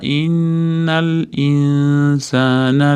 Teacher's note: innada tashdidli nun kelgan uchun g'unna bor. Insana mana alif tagida i kelyapti.